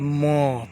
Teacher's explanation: बोलिएगा म तो थोड़ा नाक से हो जाता है, हल्का ओठ से, इसलिए है नासिक वर्ण लास्ट वाला, नासिका से।